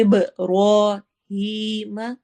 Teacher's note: ابراہیم را کو ہم موٹا پڑھیں گے اور ہی پہ یا مدہ کریں گے